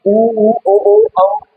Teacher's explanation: तो होठों के आधार पर स्वर जो है वो दो प्रकार के होते हैं, वृत्तमुखी और अवृत्तमुखी। वृत्तमुखी जिनके उच्चारण में होठ गोल होते हैं